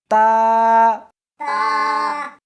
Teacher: اس حرف کو زبان کے اوپر کے تالو سے ملا کر پڑھیں گے۔